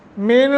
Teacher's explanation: نون ساکن کے بعد شین حروف اخفا میں سے ہے، چنانچہ یہاں اخفا کریں گے